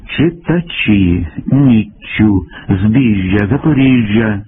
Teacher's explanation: дещо пом'якшується шиплячі у позиції перед і ю я